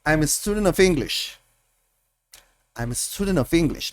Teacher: Miren que la T desapareció